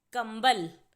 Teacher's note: कंबल में क के बाद म की आवाज आ रही है इसीलिए क पर लगाएंगे बिंदु और शब्द बनेगा कंबल कुछ और